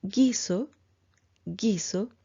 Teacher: y después de ella está la vocal anterior el halo fono palatal oclusivo sonoro ocurrirá si antes hay silencio o consonante nasal y después hay una vocal anterior